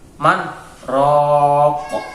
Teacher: Di sini ada tanda siktah. Cara membacanya yaitu dengan berhenti sejenak tanpa mengambil nafas.